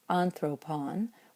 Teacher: when the last syllable with that nice omicron becomes short again, its accent can move back to the alpha in the third to last syllable, which is where it really wants to be.